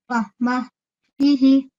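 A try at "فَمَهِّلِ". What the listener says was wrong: Okay, this one, I know it sounds like my voice is breaking, but I'm saying this all in one go, in one breath. Okay, so don't take a break between the meme and the ha. We're joining it together. Mahi.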